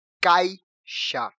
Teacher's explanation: o ponto em que ela fica mais acentuada, em que ela fica mais demarcada na palavra é quando a gente pronuncia a letra a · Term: sílaba tônica